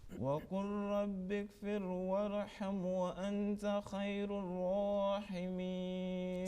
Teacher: make sure that ghain is properly pronounced and ra is thick